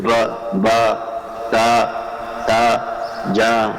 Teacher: یہ زبروں کے اندر یہ کھچاؤ پیدا ہو رہا ہے. اس کے اندر الف جیسی اس میں مدہ پیدا ہو رہا ہے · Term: الف مدہ